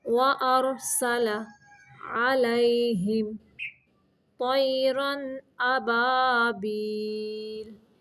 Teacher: یہاں پہ را کو ساکن کرتے ہوئے موٹا رکھیں گے